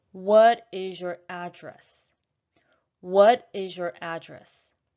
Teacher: it's going to be slightly up and down with this last word ultimately it goes down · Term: falling intonation